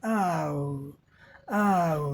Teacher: Back of tongue up, तो हमारे जिह्वा का पश्च भाग, पिछला भाग उठता है। आओ, आओ, देखो यहाँ भाग उठा है पिछला। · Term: आओ साउंड